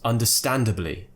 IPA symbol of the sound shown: ə